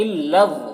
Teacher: غا کو پر پڑھیں گے، یہ حروف مستعلیہ میں سے ہے، اور نون مشدد غنہ کے ساتھ پڑھیں گے۔